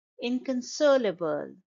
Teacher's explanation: the stress is on the third syllable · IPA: /ˌɪn.kənˈsoʊ.lə.bəl/